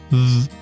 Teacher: When we pronounce /ð/, our vocal folds are vibrating. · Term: voicing